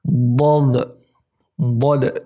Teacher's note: hanya huruf dhad itu permukaan lidah kalian semuanya itu menyentuh langit-langit atas